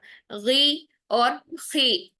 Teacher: ہے، ہونٹوں کا جھکاؤ بھی نیچے کی طرف ہوتا ہے، اور ہم اس کو آواز کو موٹا کرنے کے چکر میں زیر کو ادا کرتے کرتے ہم اس میں واو کا ایڈیشن کر دیتے ہیں